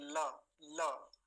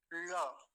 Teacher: हमारी जो मूर्धा होती है मुख में सबसे ऊपर वाला स्थान वहां ले जाकर ल का उच्चारण करना है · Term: मूर्धा से